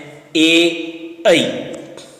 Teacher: कंठ तालु नाम है कंठ तालव्य, और उच्चारित होने वाले स्वर हैं ए, ऐ